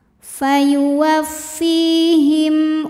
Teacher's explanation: panjang Fanya dua harakat fuwaffihim him ada hukum izhar syafawi karena ada mim sukun yang menghadapi huruf selain mim dan ba yaitu huruf hamzah maka mim sukunnya dibunyikan dengan jelas